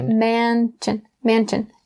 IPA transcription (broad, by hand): ˈMæn-tʃn